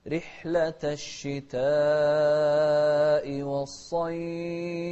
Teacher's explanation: شوف الصاد مفخمة ونمد الشتاء 4 حركات، رحلة الشتاء والصيف، ونوضح الفاء ونهمس فيها أيضا.